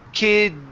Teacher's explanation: So when we pronounce that D sound, okay, the D and the S together, okay, you need to create a vibration in your throat because the D is a voiced sound